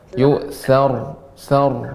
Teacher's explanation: ra sifatnya tadi adalah sedikit mengalir, bainiyah. Ya, tidak banyak mengalir, namun juga bukan berarti berhenti.